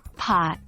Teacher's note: pronounced with both lips